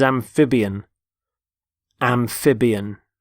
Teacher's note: Notice the stress on the middle syllable, amphib.